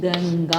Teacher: ആ വർഗ്ഗ ആ വർഗ്ഗത്തിലുള്ള അനുനാസികം ഏതാണ് ഇതുതന്നെയാണ് ഗവും ക വർഗ്ഗത്തിലാണല്ലോ വരുന്നത് ക വർഗ്ഗത്തിലെ അവസാനത്തെ അക്ഷരം ങ്ങ തന്നെയാണ് അതുകൊണ്ട് ഇത് ചേരുമ്പോൾ ഈ അനുസ്വാരം എന്തായി മാറും ങ്ങ ആയിരിക്കും